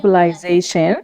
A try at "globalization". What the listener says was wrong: مو اس زي globalization.